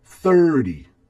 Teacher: You have 3 and 0, so the stress will be on the first part of the word